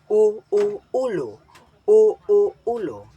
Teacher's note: Binibigkas ng mataas ang posisyon ng dila at likod.